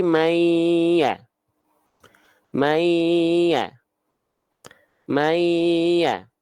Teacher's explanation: nah lebur dia udah enggak ada lagi huruf n di sana